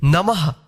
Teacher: ध्यान रखिएगा, जिस अक्षर के बाद अगर ये दो बिंदी रहे तो उस अक्षर के बाद जो है ना ह का उच्चारण करिएगा, ठीक है। नमः। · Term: विसर्ग